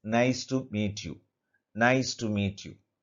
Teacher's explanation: if you read the sentence, naturally at the end your voice will fall. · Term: falling intonation